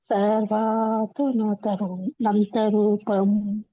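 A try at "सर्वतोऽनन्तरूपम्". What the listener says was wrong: ಸರ್ವತೋನ ನೋಡಿ ಇಲ್ಲಿ ಎಳಿಬೇಕಲ್ಲ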